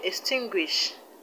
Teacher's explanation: The word extinguish, the stress is on TIN, tin.